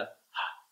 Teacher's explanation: when you learn to use the H sound, you tend to pronounce it kind of like a J, like Jorge. So that means you're bringing the sound into the back of your throat and aspirating it. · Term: The aspirated H